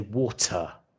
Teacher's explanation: where I come from we say water with a strong t